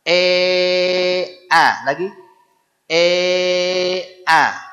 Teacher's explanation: itu huruf hamzah ingat keluar di pangkal tenggorokan dan dia tipis tidak boleh a auzubillah a a a